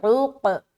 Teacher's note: عین کو حلق سے نکالنا ہے اور قاف بھی موٹا کر کے پڑھیں گے، اور عین کو جب ہم قاف سے ادا کریں گے، بعض اوقات جب دونوں حرف ساتھ میں ہوتا ہے تو نکالنا تھوڑا مشکل ہوتا ہے، لیکن بہت مشق کرنے سے پھر اس کی ادائیگی صحیح ہو جاتی ہے۔